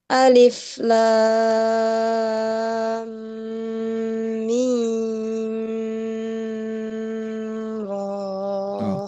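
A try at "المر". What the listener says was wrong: Oke, ro-nya 2 harokat, hati-hati. Itu kepanjangan Bu. Ro 2 harokat aja.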